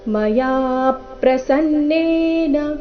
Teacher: ಮಯಾ ನಲ್ಲಿ ಯಾ ದೀರ್ಘ ಬಂದು ನಂತರ ಯಾ ಮೇಲೆ ಪದ್ದು ಆಘಾತ ಕೊಡಬೇಕು